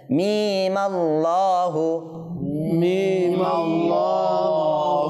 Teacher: এক আলিফ টেনে ওই পরবর্তী মিমে জবর দিয়ে লামকে ধরে ফেলবো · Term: ওয়াসল অবস্থা